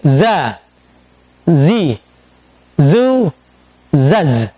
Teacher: Bagaimana cara melafadzkan huruf za ketika za itu istifal? Lidah kita tidak terangkat. Contohnya, za, sedikit meringis.